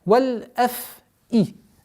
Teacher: Договариваем звук фа, потому что фрикативный звук.